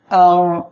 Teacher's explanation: আইন অক্ষরটা গলাটা চেপে আমরা উচ্চারণ করব